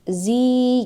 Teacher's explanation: karena ada kasrah bertemu dengan ya mati jadi panjangnya dua harakat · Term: Madi